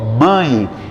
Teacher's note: colocar o dedo no nariz aqui que você verifica Ó mãe ele vibrou ele passou pelo canal do nariz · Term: nasal